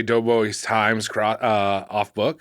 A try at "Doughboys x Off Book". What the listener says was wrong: No, well you say that if you want to sound like a fucking idiot. Doughboys off book. You just say it like that. You don't pronounce the X. It's not a times. It's not an X. It's not vocalized.